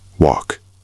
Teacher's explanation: Watch the L and walk. It's silent, just like salmon.